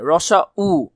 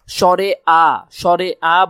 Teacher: সংবৃত মানে রসা উ, দেখো মুখটা ছোট হয়ে গেছে, ঠোঁট দোনোটা ছোট হয়ে গেছে, কিন্তু স্বরে আ বলার সময় মুখটা বড় হয়ে গেছে, মানে বিবৃত।